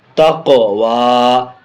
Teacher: قاف حرف قلقلہ میں ہونے کی وجہ سے اس کو آواز ٹکر کھا کر کے لوٹ بھی رہی ہے۔